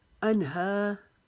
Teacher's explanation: कानू इल्ला कानू अनहा, हा की आवाज़ हलक के नीचे से निकालेंगे जैसे इंसान तकलीफ़ के वक्त आवाज़ निकालता है। हा अनहा, हा को अलिफ जितना लंबा करेंगे।